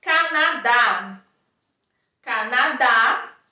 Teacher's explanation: a última sílaba é a mais forte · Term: oxítona